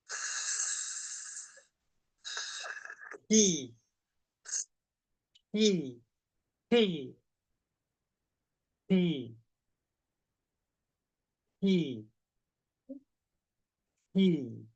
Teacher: Kalau kasroh, ingat ujungnya tempat temu gigi saya di bagian bawah, tengahnya naik, pangkalnya naik.